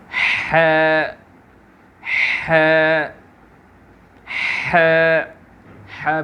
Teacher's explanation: بالکل حلق میں سے نکلتا ہے, یہاں حلق کے بیچ کے حصے سے نکلتا ہے